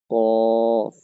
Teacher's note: জিহ্বার গোড়া থেকে একটু আগে বাড়িয়ে তার বরাবর উপরের তালুর সঙ্গে লাগিয়ে উচ্চারিত হবে কাফ।